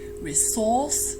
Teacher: in British English, the stress is always on the second syllable